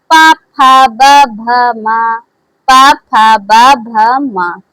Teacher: प वर्ग का उच्चारण स्थान ओढ़ से होता है। आपस में स्पर्श कर रहे हैं।